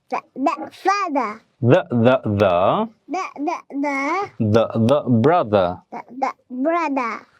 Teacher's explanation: British ইংলিশে ওরা লাস্টের আরটাকে সাধারণত উচ্চারণ করে না, কিন্তু আমেরিকানরা আবার ফাদার, মাদার এরকম ভাবে বলে।